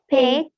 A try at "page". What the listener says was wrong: I didn't hear the J sound here. Read again. So remember, we need to pronounce every sound very clearly. So this words here has the soft G sound.